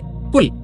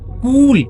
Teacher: अगर हम छोटा ऊ बोलें तो हम बोलेंगे कुल